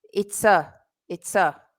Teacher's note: when we put that in fast speech, that a is pronounced like a schwa.